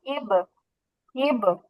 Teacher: ঠোঁটের শুকনো জায়গা থেকে উচ্চারণ হচ্ছে